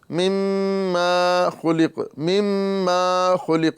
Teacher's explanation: اکثر لوگ یہاں پر اس طرح کرتے ہیں کہ مشدد کا جو گنہ کرتے ہیں، مما خلق، مما خلق، یعنی میم کو دراز کر دیتے ہیں